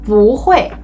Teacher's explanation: when 不 is followed by a syllable in the fourth tone, it changes into the second tone